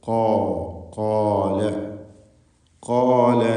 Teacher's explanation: ഖാഫ്, അതിൻ്റെ ദീർഘാക്ഷരമായ അലിഫ്, ഇവയിൽ സ്വരഭാരത്തോടെയുള്ള തഫ്ഖീം നൽകിക്കൊണ്ടായിരിക്കണം ഉച്ചരിക്കേണ്ടത്